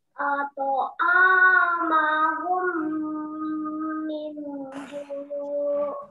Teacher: ketika mim sukun bertemu mim wajib dibaca dengung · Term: idgham mimi